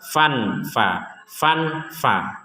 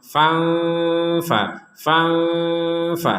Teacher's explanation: Fa kalau dibaca dengung 100% dengung rongga hidung berdengung 100% itu Tapi kalau dibaca antara jelas dan dengung menjadi samar